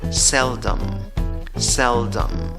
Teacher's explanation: En la escritura va una E, en la pronunciación también va una E en la primera sílaba. En la segunda sílaba, en la escritura va una O, pero en la pronunciación va schwa